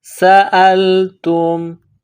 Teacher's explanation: سین میں سیٹی کی آواز پیدا کرنی ہے